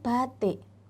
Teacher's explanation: I pada kata batik di situ merupakan bentuk i tak penuh. Sehingga cara pengucapannya adalah i yang lebih cenderung ke e.